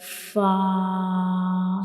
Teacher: when we pronounce Fa, the edges of the upper front teeth will touch the inner side of the lower lip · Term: origin of Fa